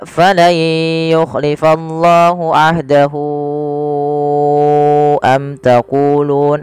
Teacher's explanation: Yaitu kita panjangkan sepanjang 4 harokat sebagaimana mad jaiz. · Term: mad silah tawilah